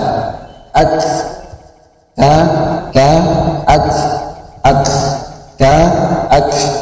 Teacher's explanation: Kaf agak ke belakang lagi ya, kalau kita bahasa Indonesia kan maju ya kan.